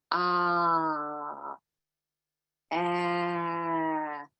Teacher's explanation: and vowels are Sounds by the way not letters is that we have an open unobstructed airflow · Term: continuants